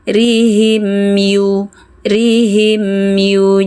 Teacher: Rihim rihimu, jangan sampai memantul, biarkan mim mengalir sedikit agar tidak memantul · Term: izhar syafawi